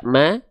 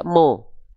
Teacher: kalau keluar dengan vokal A berarti dia tipis, kalau dia seperti vokal O berarti dia tebal. Ya udah, huruf mim ketika berharokat baris atas kan nggak dibaca ma, dibaca mo.